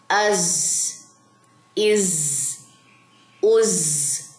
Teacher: زا میں سیٹی ہے تو آپ نے سیٹی بھی ادا کرنی ہے